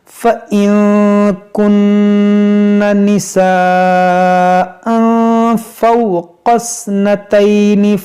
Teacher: كُنَّ نِسَاءً فَوْقَ اثْنَتَيْنِ، یہاں پر دیکھیں مد متصل ہے اور یہاں تنوین کے بعد فا ہے تو یہاں پر اخفا کریں گے